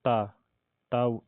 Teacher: दंत भी है त वर्ष भी है और ता अल्प प्राण भी है और ता अघोष भी है